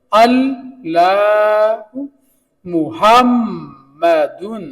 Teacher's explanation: یہاں میم کے اوپر شد ہے میم 2 بار پڑھا گیا